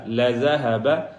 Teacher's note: لَذَهَبَ، لَذَهَبَ یہاں پہ زال ہے، زا نہیں ہے، لَذَا نہیں ہے، لَذَا، لَذَهَبَ، اور جو ہا ہے وہ سینے والی ہا ہے، حلق والی ہا نہیں ہے